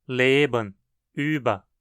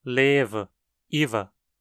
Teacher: Um som de B entre vogais do alemão costuma ser um V em hunsriqueano